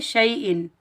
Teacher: क्योंकि ऐन हरूफे हल्की में से आ रहा है तो यहाँ हमज़ा का इजहार होगा, इसको हम ज़ाहिर करेंगे, ना गुन्ना करेंगे ना इख्फा करेंगे।